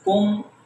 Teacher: میم پر آواز کو نہیں چھوڑا، روک دیا